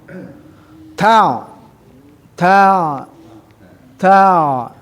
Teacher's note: ta ini ada sifat yang berdesis, sifat hames. Ta masuk kepada ain yang tadi ada di wastol halqi.